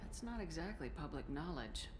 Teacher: Her voice is different as well. She's talking all like breathy and sexy.